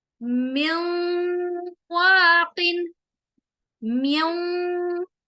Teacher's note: اب یہاں پر نون کے بعد یرملون میں سے یا میم واو نون میں سے واو آ رہا ہے، واخ میں واو آ رہا ہے، تو یہاں نون ساکن کو ہم واو کے اندر داخل کریں گے اور آواز کو ناک میں لے جائیں گے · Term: غنہ